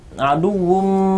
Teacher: itu tanwun bertemu dengan huruf mim, yakni bacaan idgham bi gunnah, tandanya ditahan agak lama